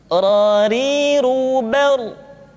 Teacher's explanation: Berikutnya adalah huruf ra, diucapkan dengan menyentuhkan punggung lidah dengan langit-langit.